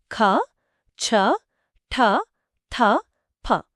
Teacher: ఇవి మహాప్రాణ శ్వాసములు అన్వాయిస్డ్ ఆస్పిరేటెడ్